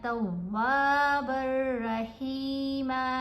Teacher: با کو جب را سے ملانا ہے نا، یہاں پر را کے اوپر تشدید ہے، تنوین کے بعد را مشدد آ رہی ہے، تو ہم نے اس کے اوپر غنہ نہیں کرنا